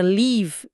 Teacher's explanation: Já o E da palavra leave, de partir, é um som longo, tenso. Você literalmente precisa esticar os lábios como se estivesse dando um sorriso para pronunciar certo.